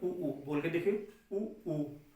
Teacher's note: उ बोल के देखिए, उ जीभ ऊपर की तरफ जा रहा है एकदम, तो इसमें भी हमारा क्या हो जाएगा, उ हो जा रहा है।